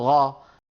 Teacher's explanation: خلط القاف بالغين مثل إخواننا في السودان، بدل ما يقولوا قا بيقولوا غا، قاف مخلوطة بالغين، هذا لا يصح أبدا أبدا أبدا.